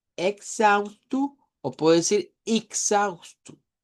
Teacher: en Brasil lo que comienza con E se puede pronunciar con I o con E